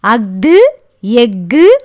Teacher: அஃது எஃகு ஆகிய சொற்களில் ஆயுத எழுத்து தனக்குரிய அரை மாத்திரை அளவில் முழுமையாக ஒலிக்கும்.